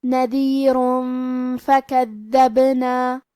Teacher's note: فا حروف الاخفاء میں سے ہے، لہذا ہمیں یہ حکم کو غنہ کے ساتھ ادا کرنا ہے